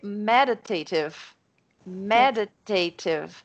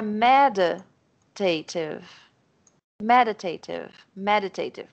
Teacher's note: É como se fossem 2 palavras, a primeira sílaba de cada uma é forte.